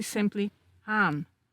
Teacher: In West Flemish and Zeelandic, the G sound may become an H sound. So gaan can be simply haan.